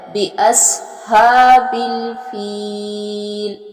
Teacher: ربو کا بِأَصْحَابِ الْفِيلِ، سواد جو ہے اس کو بھی پر اور موٹا پڑھا جائے گا۔ ہا کے اوپر کھڑی زبر ہے اور اس کو ایک الف کی مقدار کے برابر لمبا کر کے پڑھا جائے گا